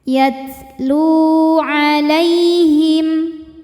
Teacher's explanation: Lu mad tabi'i zahiri sebab ada waw sukun sebelumnya berharokat dhammah. Cara bacanya dipanjangkan lamnya 2 harokat.